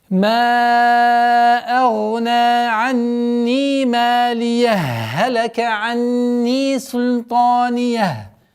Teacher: И третий вариант – это полноценная ассимиляция. Первой буквы Х со второй буквы Х